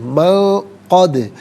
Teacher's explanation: سلط من قد، من میں نون ساکن ہے، اس کے بعد قد میں قاف حرف اخفا ہے تو نون ساکن کو یہاں پر اخفا کے ساتھ پڑھیں گے، یعنی ناک میں آواز لے جا کر گنگنانا، اس سے اخفا کہتے ہیں۔ من قد، دال ساکن ہے لیکن چونکہ حرف قلقلہ ہے تو آواز لوٹتی ہوئی محسوس ہونی چاہیے ادائیگی کے وقت